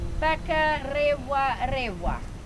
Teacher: When we use the R, we roll our tongue.